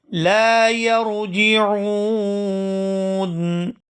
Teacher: یہاں پر وقف کریں گے اور وقف کی صورت میں نون ساکن ہو جائے گا اور یہاں مد بھی کی جائے گی